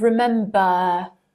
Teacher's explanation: in received pronunciation, if a word ends with R, the R is not pronounced